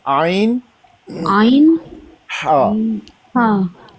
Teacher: आइन और हा ये दरमियान से अदा होता है, हलक के दरमियान से।